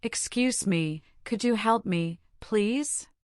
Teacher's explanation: When saying excuse me, your voice should rise slightly to sound courteous. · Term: intonation